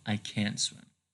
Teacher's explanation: and a negative auxiliary verbs or always is stressed right so you cannot change the vowel into a schwa so you have to keep the short a sound